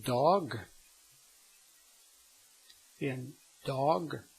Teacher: your tongue will be more flat than in English and held up against the palate and the tip of your tongue will touch the backside of your upper teeth